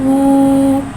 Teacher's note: वाव के ऊपर उल्टा पेश है, उल्टे पेश को एक अलिफ यानी दो हरकत के बराबर खींच के पढ़ेंगे और उल्टे पेश को होठों की गुलाई के साथ अदा करके पढ़ेंगे